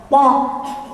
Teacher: Jadi mau ucapin po seperti ta tapi naikkan tengah lidah dan pangkal lidah.